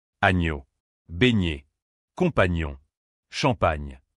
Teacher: GN se prononce comme un seul son doux et lié